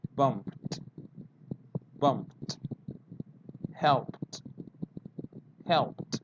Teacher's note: if a verb finishes with the p sound, in past tense is with the t